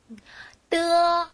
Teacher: 혀끝이 천장에 붙었다가 떨어뜨리면서 나는 소리인데요 한국어에 쌍 디귿이 디귿을 된다라고 생각하시면 돼요 어 트어 트어 우리말에